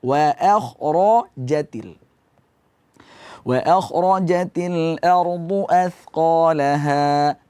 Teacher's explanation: Wa akhrajatil roja, ja dibaca tipis. Jangan karena kha tebal, ra tebal, ja ikut tebal.